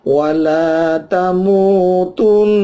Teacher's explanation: Tamutun, ini ada nun, nunnya bertasydid, ya, nunnya bertasydid, bacaannya gunnah, udara keluar lewat hidung sepanjang selama 3-4 ketuk